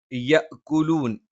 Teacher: യ നാവിന്റെ മധ്യഭാഗം മേലെ അണ്ണാക്കിലാണ്